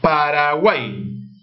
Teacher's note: U, A, I están formando un triptongo y forman una sola sílaba.